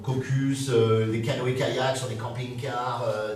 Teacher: je prends la plosive la plus profonde